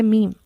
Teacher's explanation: دونوں ہونٹوں کے تر حصے کے ملنے سے، جبکہ میم ادا ہوتا ہے دونوں ہونٹوں کے خشک حصے کے ملنے سے